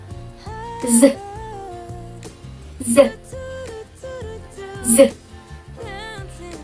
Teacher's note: S and Z sound is including in alveolar fricative because it is located in place articulation alveolar and manner of articulation fricative. · It feels vibrations, right? So it's called voiced sound.